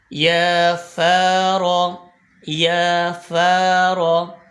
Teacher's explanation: फ ऊपर के दांतों के किनारे और नीचे के होठ की तर वाले हिस्से से अदा होता है र का मखर अभी आपको बताया के र जबान का किनारा